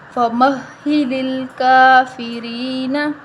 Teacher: ہم اس کو ایک الف کے برابر لمبا کریں گے اور را کے نیچے زیر ہے تو ہم اس کو باریک پڑھیں گے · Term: کھڑی زبر